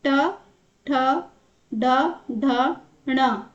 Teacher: तीसरा है मूर्धा यानी कि ट वर्ग के व्यंजन जो बोले जाएंगे तो वो मूर्धा उच्चारण स्थान उनका होगा